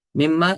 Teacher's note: نون میم میں تو داخل ہو گیا ہے، ادغام ہو رہا ہے لیکن غنہ ساتھ ہو رہا ہے